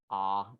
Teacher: ah is low and back